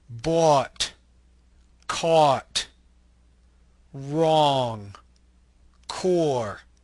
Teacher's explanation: This is a mid-back rounded lax vowel. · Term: open O